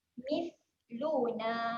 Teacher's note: Hati-hati dekat huruf ta. Huruf ta kena jeli lidah kemudian kena keluarkan angin ya.